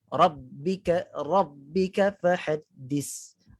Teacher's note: bila tak keluar lidah, dia akan bunyi seolah-olah macam huruf sin.